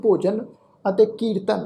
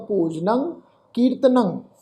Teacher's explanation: ਅਸਲ ਸ਼ਬਦ ਭੋਜਨ ਅਤੇ ਕੀਰਤਨ ਆ ਪਰ ਨੰਨੇ ਉੱਤੇ ਟਿੱਪੀ ਦੀ ਮਾਤਰਾ ਦਾ ਨਾਸਿਕ ਉਚਾਰਨ ਹੋਏਗਾ ਭੋਜਨੰ ਕੀਰਤਨੰ ਭੋਜਨੰ ਗੋਪਾਲ ਕੀਰਤਨੰ ਅਲਪ ਮਾਇਆ ਜਲ ਕਮਲ ਰਹਿਤੈ ਰਹਿਤੈ